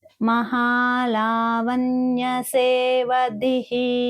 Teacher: ధీ అనేది మహాప్రాణాక్షరము, పక్కన విసర్గ ఉంది